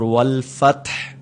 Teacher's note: اس میں تا پر قلقلہ نہیں کرنا، جھٹکا دے کر نہیں پڑھنا